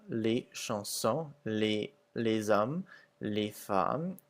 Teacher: the S's are pretty much not pronounced at the end of the words, except for les hommes, where it makes a Z sound.